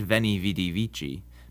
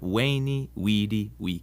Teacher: you've done quite a bit of Latin the v in Latin is pronounced like a w sound